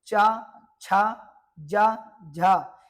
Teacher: तालव्य ध्वनियां वह होंगी जिनमें हमारी जीवा हमारे तालु से स्पर्श करेगी।